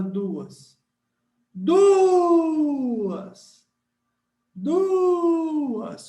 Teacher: Quando a gente usa a técnica do grito, o du, a gente segura no du e depois diz o a. Ou seja, você tem aqui um hiato.